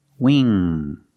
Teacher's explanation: Pronunciation, make that long E sound, we, plus the NG, The N sound in the back. The sound comes from the back, and the nose. Wing. There's no G sound.